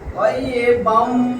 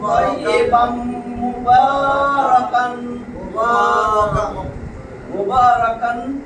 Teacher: তানবিনের পরে মিম আসলে তাসদীদ দিয়া মিলাইতে হবে। তাসদীদ দিছি, এখন মিলাবো তাইয়িবাম। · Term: ইদগামে বা গুন্না